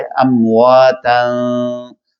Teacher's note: ناک کے بانسے کے ساتھ اس کی آواز جو ہے وہ ملتی ہے، تو ایک معمولی سی گنگناہٹ اور ارتعاش سا وہاں پر پیدا ہوتا ہے اور وہ خوبصورتی پیدا کرتا ہے. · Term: اخفا